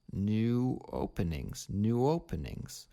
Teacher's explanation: we see the word new and openings connected together by the insertion of that W sound